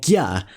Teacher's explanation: The combination CG is pronounced as a palatal gya, something like the English gear.